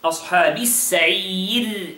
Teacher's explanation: The صاد is heavy, right? With the همس.